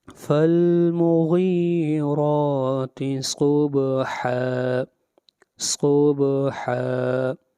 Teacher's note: صاد حروف مستعلیہ میں سے ہے، صاد کو موٹا پڑھیں گے، اس کے بعد با ہے، با کے اوپر قلقلہ ہوگا